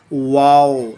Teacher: اور واو کے ادائیگی کے لیے ہمیں ہونٹوں کو گول کرنا ہوتا ہے